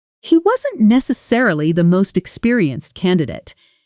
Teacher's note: Notice how wasn't necessarily compresses in fast speech. Almost losing that middle syllable.